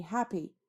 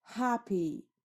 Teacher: So when I say happy, you hear happy. The higher ha, louder ha, but longer p. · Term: trochaic grouping